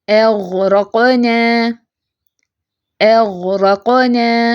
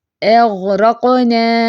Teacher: ہلانا نہیں ہے غین کو، تھوڑی سی آواز چلے گی اور حمزہ لائٹ رکھنا ہے اور را کو پر کرنا ہے